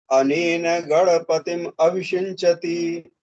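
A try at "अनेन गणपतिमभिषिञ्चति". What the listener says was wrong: ठीक है, आप उसको विग्रह करके बोल रहे हैं। एक साथ बोलेंगे, समझ पद लिखा है तो समझ पद में भी बोल सकते हैं। अनेन गणपति मविषिंचति।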